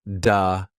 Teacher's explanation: Also some of the TH sounds. When speaks, sometimes they sound a bit like D or V sounds